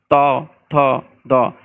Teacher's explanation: ত থ দেখেন এই ত উচ্চারণ করতে আমার জিহ্বার ডগাটা ঠিক দাঁতের সঙ্গে কিন্তু স্পর্শ হচ্ছে, ত থ দ, জিহ্বার ডগা মানে জিহ্বার মাথাটা দাঁতের সঙ্গে স্পর্শ হচ্ছে, এই জন্য বলা হয় দন্তমূলী, মানে দাঁতের যে মূলের সঙ্গে স্পর্শ হয়। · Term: দন্তন্য